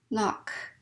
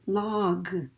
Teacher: that vowel pretty quickly lock and the next one's log because i want that voice to keep going through that consonant · notice i turn off that vowel pretty quickly